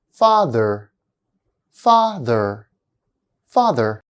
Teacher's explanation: the first syllable PHA is louder longer and higher in Pitch than the second syllable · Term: word stress, stressed syllable